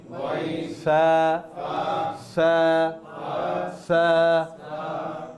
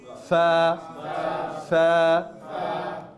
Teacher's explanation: দুই ঠোঁটটা না, উপরের দাঁত নিচের ঠোঁট